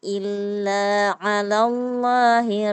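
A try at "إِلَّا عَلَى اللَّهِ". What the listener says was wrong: 2 harokat saja, 1 ayunan. Illa ala, jangan terlalu panjang, ya.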